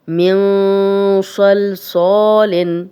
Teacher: صاد موٹا تھا تو غنہ بھی تھوڑا موٹا کر لینا ہے